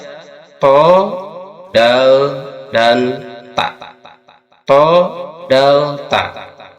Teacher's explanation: ujung lisan disentuhkan pada pangkal gigi seri yang atas, lalu tekan bunyikan.